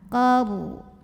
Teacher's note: Rasukun dibunyikan secara tafkhim karena huruf sebelumnya yang qaf berbaris fathah. Maka cara bacanya adalah ditebalkan ro-nya ya. Pangkal lidah kita diangkat.